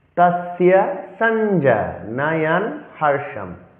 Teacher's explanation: তস্য দন্তস্বকে এস এর মতো উচ্চারণ করতে হবে এবং জফলা অন্তঃস্থকে ইয়র মতো উচ্চারণ করতে হয়